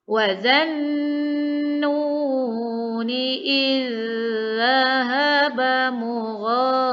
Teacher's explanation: Ni dekat ni zal bertemu dengan, kita nampak huruf yang sama tu. Dialah zal pertama bertanda sukun ke dalam zal kedua yang berbaris sehingga bacaan kita menjadi satu huruf yang bertasydid.